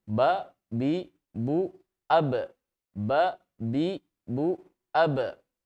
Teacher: ada karakter yang hilang yang dimiliki oleh huruf ba yaitu Qalqalah sifat memantul sehingga bunyinya Harusnya kita gabungkan makhluk dan sifat bunyi menjadi babi